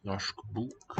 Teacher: Telescope into a single consonant sound. Sh. Norsk bok.